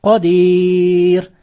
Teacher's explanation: Tabiiy maddan so'ng sukuni orsa mad or bo'lib ikki to'rti harakat cho'zib o'qiladi. · Rga kelsak ringichga o'qiladi